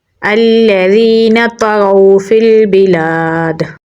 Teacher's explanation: یا حروف مدہ میں سے ہے تو اسے ایک الف کے برابر لمبا پڑھیں گے۔ طا کو پر یعنی موٹا پڑھیں گے، غین کو پر یعنی موٹا پڑھیں گے اور واؤ کے ساتھ ملائیں گے کیونکہ واؤ کے اوپر جزم ہے۔